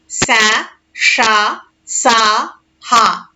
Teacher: ఊష్మములు ఊది పలుకబడు అక్షరాలను ఊష్మములు అంటారు